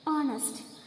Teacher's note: Here H is silent. So here comes vowel sound.